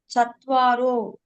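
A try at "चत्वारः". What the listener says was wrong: சத்வாரோ will be அந்த முன்னாடி நம்ம சொன்னோம்ல ஏகோ பாலகா will be ஏகஹ பாலகஹ. The sandhi is there. So here it will be சத்வாரஹ. சத்வாரஹ பாலகாஹ.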